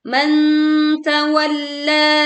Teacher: tekan La lalu panjangkan dua harakat